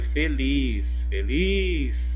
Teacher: a última sílaba foi a mais forte, foi a tônica. Então ela é uma oxítona. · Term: sílaba tônica